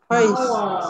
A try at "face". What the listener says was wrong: No nha, âm Z là sai nha. Face. Âm S at the end sound mới đúng nha.